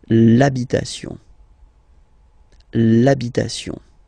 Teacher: Even if you've got this H, then the first sound you hear is A. Okay, so for the same reason you will have to take this A away, and then you get this l'habitation.